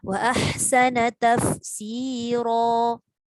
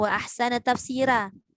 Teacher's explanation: Walaupun ada juga setengah imam yang baca dengan cara ra itu tarkik, tapi bukan imam kita lah. Imam kita Hafs an Asim, ra dibaca dengan tafkhim.